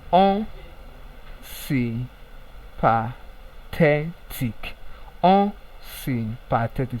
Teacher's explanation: So at the pronunciation of te, the voice rise. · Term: primary stress